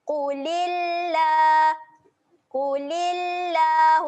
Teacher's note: Huruf lam kat tengah-tengah ni kita akan panjangkan sebanyak 2 harakat.